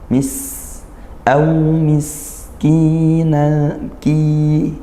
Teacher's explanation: Sin sukunnya kita alirkan suaranya